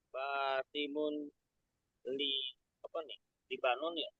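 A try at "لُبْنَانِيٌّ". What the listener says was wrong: Tapi bahasa Arabnya tuh Lubnan. Lubnan. Ditambahkan ya di akhirnya. Basimun Lubnaniyun. Basimun Lubnaniyun.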